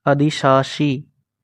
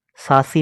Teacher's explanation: पहले तालव्य और उसके बाद में दंत है, मूर्धन्य नहीं। अधिशासी, सासी नहीं।